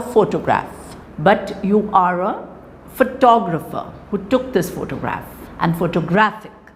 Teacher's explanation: they also change their stress pattern so the primary stress shifts towards the right